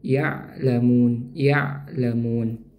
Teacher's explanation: huruf ain ini makhrajnya ditenggorokan ya tenggorokan bagian tengah bersama dengan huruf ha